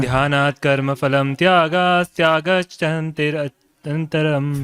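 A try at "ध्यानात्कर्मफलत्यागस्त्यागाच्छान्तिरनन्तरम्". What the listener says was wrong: फलम नहीं है, फल है प्रभु। ध्यानात् कर्म फल त्यागात् शांतिर अनंतरम।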